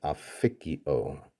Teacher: this consonant assimilates to the next consonant, so it becomes an F, and that introduces a vowel change here.